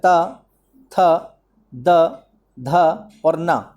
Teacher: इनका जो है उच्चारण आपका दांत से होगा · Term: ता वर्ग